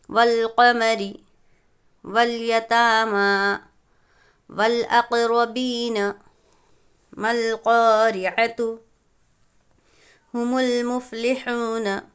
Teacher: واو لام زبر ول پڑھے ہم نے نا، تو الف لام اگر یہاں پر حروف قمری کا قاعدہ ہوگا، کیونکہ الف لام کے بعد حروف قمری میں سے قاف ہے، الف کو نہ پڑھیں گے بلکہ ہم لام سے ملا کر پڑھیں گے۔ قاف کے اوپر زبر کی حرکت ہے، یہ تینوں پر زبر کی حرکت ہے، حرکت کو جلدی پڑھیں گے، تھوڑا بھی نہ کھینچے۔